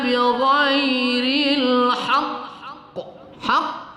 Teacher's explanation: agak tertahan sedikit qafnya kita baca qalqalah kubra agak kuat